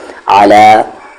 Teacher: عین پہ زبر آ، لام پہ کھڑا زبر لا، علا، عین کا مخرج ایگزٹ مڈل تھروٹ ہے